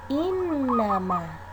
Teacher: Lafal ini mengandung gunna musyaddah karena terdapat huruf nun yang berbaris tasdid atau syaddah, sehingga cara membaca nun tersebut harus didengungkan atau dihentakkan lalu ditahan selama 2 harokat